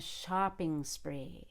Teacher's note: talking about talking about going on going on a shopping spree even between shopping and spree i still want to make it connected even though spree starts with a consonant and not a vowel shopping spree i'm gonna hold that ng